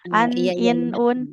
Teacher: Nah, kan tanwin di dalam tanwin ada bunyi nun sukunnya.